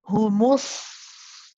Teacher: The sad is a rakhawa letter. So when you first join with the meme, you prolong it. Humus. And you hold that first.